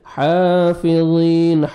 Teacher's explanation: حا کو آپ نے 1 سیکنڈ کھینچنا ہے، کھڑا زبر ہے، اور ضا کو موٹا کر کے پڑھنا ہے ، اور یا مدہ 1 سیکنڈ ضا کو کھینچنا بھی ہے،